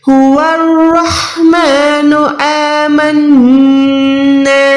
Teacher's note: الف کو لمبا کریں کیونکہ زبر نہیں ہے بلکہ کھڑی زبر ہے. کھڑی زبر کو ہم 1 سیکنڈ کھینچ کے پڑھتے ہیں.